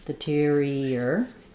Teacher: As I go from the E to the I have a little y that connects those two.